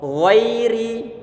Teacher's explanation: huruf ghain itu dia di pangkal ataupun di tenggorokan bagian atas